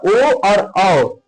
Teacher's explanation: इसमें कंठ और होट दोनों का यूज होता है